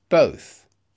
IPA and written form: bəʊθ (both)